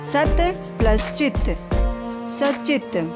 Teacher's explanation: त के बाद च वर्ग का कोई वर्ण हो तो त का च हो जाता है